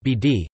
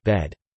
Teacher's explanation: giving the pronunciation of bared as [beːd], creating a contrast with the short vowel in bed [bed]